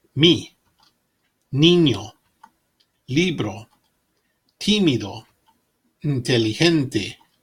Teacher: Like the E in teeth, the I in machine, but shorter.